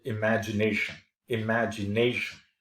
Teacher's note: with stresses on the second and the fourth syllable